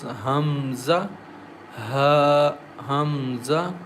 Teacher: Hamza comes from the lower of the throat